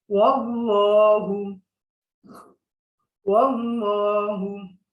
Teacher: এখানে যেহেতু জবর আছে, আমরা মোটা করে পড়বো।